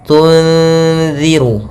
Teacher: Kemudian tunziru ada nun mati bertemu dengan zal, yaitu kita namakan dengan ikhfa hakiki, yaitu adanya huruf nun yang bertemu dengan huruf zal. Cara membacanya adalah kita samarkan suara nunnya kepada zal,